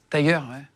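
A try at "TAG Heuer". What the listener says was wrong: Tagueyer. Toi, tu dis Tiger. Non, Tagueyer. Tagueyer.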